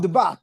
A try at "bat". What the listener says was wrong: Give it a t at the end, bat. T, t. I want to hear that kind of drum roll, like t, t, bat. yeah, I mean, sometimes we do swallow the T sound in this area, especially. And so we use that glottal stop, yeah, or glottal, bottle.